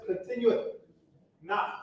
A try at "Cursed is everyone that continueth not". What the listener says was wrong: Yeah, don't pause. There's no comma there.